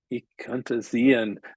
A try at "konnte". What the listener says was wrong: There's no umlaut here, so it should be konnte.